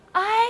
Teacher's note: 要注意前面的重读，后面的轻读，从前面的发音慢慢地滑向后面的发音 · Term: 复韵母